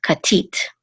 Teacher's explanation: we know that the accent is on the last syllable, tit, katit.